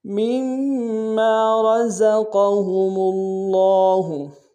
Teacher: مما میں میم کو اگلے میم کے سامنے لانا ہے، میم کے اوپر تشدید زور دیں گے · میم کے ساتھ الف مدہ ایک الف دال میں کھینچیں گے، را کو موٹا ادا کریں گے، قاف کو موٹا ادا کریں گے